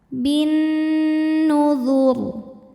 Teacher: Kemudian nunnya hukumnya gunnah musyaddadah karena nun bertasydid. Cara bacanya berdengung, tahan dengungannya kurang lebih 2 harokat.